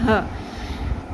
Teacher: ہ کو اپنے حلق کے سینے کے حصے والی سائڈ سے نکالنا ہے